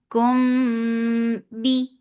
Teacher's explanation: lips should be in a straight position. You are giving gunna here. Yes, this ikhfa shafawi needs gunna. Kum bi. Focus, I give e sound.